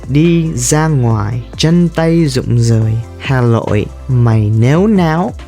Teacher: many Northerners can't pronounce the R and L. Instead, they say Z for R and N for L.